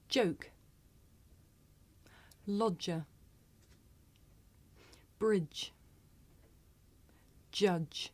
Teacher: to produce an affricate we block the air completely and then we make a very narrow opening